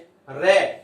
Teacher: जब अपने रे का उच्चारण करते हैं तो जीभ वो लुढ़कती नीचे आती है। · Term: लुंठित